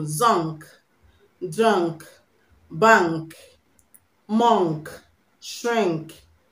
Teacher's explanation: The N before the K is pronounced ng, ng, ng.